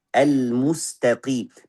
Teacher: Memang qaf di sini tebalnya tidak terlalu kuat karena dalam keadaan kasrah.